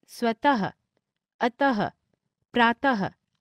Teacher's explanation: जब शब्दों में दो भिन्न नासिक्य व्यंजनों का एक साथ प्रयोग होता है तो स्वर रहित पंचमाक्षर के स्थान पर अनुस्वार का प्रयोग नहीं होता है, जैसे जन्म, वान्मय, निम्न आदि। विसर्ग, विसर्ग का उच्चारण अघोष ह व्यंजन के समान होता है